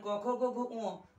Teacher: ক খ গ ঘ ঙ কণ্ঠবর্ণ, কণ্ঠ দিয়ে উচ্চারিত হয়।